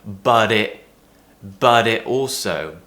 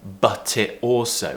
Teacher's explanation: when we have a T which is between two vowels whether it's in a word or it's between two words we pronounce it as a T